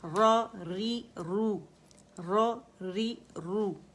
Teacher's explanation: را رو موٹا ہے ری باریک ہے